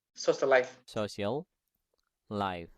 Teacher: Jadi geminates itu gampangnya adalah double ya teman-teman. Kalau huruf akhirnya sama huruf awal di kata berikutnya itu sama, itu dibacanya satu ya